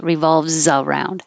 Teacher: I just changed the S to a Z to remind you to connect za. Revolves around.